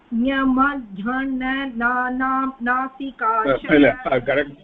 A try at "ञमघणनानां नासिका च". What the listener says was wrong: இல்ல அந்த ஞமான நிறுத்தி சொல்லுங்க. actually there is a difference between how each one of them is pronounced, and the whole this akuha vasarjaniyanam is to arrive at a correct pronunciation. abhi nya na atra idu solli vidunga. இல்ல na ரெண்டு மூர்தன்யானாவும் இதோ ஒரே மாதிரி இருக்கு.